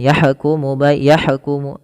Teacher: Alirkan dalam lafal ha ya. Jangan dipantulkan.